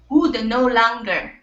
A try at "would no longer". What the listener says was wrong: Don't end the D sound. You're saying would. Would no. So it's would no. Would no longer.